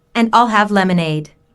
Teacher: Notice how stresses I'll and lemonade to emphasize her choice.